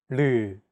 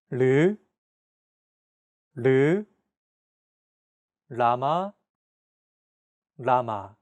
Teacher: This sound is actually somewhere between an L and an R sound. When pronouncing this sound, your tongue should strike the gum ridge behind your upper teeth in a quick, rapid motion. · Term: 리을